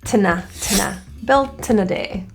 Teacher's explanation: Built in a, we have an A which is reduced to a quick The word in gets reduced to an N, na. And the T, if we slide built over to the N, tna.